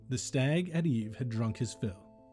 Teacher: Here we see a pattern of an unstressed syllable followed by a stressed syllable. This is called an iambic pattern.